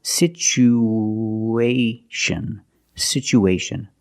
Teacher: syllable is the long o like Boot and moon situ situation we have two vowels together the U and the a we need to link these vowels with the sound ww like the W sound w w together